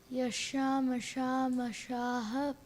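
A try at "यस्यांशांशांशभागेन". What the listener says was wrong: No, you missed the Sham. Try it again.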